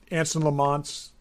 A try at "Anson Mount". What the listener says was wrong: Anson Mount. Anson Mount. You said Lamont. It's Mount.